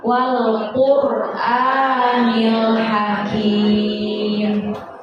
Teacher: Kalau ro sukun, nah kita perhatikan tulisan semuanya. Ada ro sukun, sebelumnya harokatnya dhammah, berarti itu tafkhim, dibaca tebal.